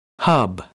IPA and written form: hʌb (hub)